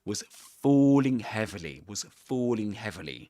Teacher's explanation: the long o sound which you'll find in British English. This is the O sound which is symbolized like this.